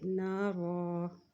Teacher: یہاں ہم رکیں گے تو دو زبر کی جگہ ہم ایک زبر پڑھیں گے